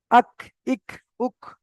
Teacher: জিভের গোড়া হতে একটু আগে এসে ওই সোজা উপরের তালুর সাথে লাগিয়ে কাফ উচ্চারিত হয়।